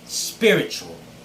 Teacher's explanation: it is the first syllable that is stressed · they normally stress the third syllable but it's not the case it should be the first syllable